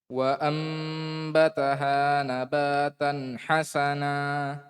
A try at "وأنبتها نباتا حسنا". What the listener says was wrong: Iwad, anitan, berapa harokat? 2 harokat, nggak boleh lebih. Dan jangan ada hamzah setelahnya. Hamzah sukun. Hasana, hasana. Nah, itu nggak boleh. Tapi lepas. Nabatan hasana.